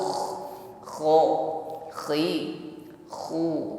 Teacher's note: ada ngoraknya, ada gesekan di tenggorokan. Ketika disukun lebih nampak bukan yang bukan bersih ya, tampakkan gesekan di tenggorokan, ada bunyi dengkurnya.